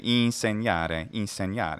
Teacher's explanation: it's a nasalization not a strong in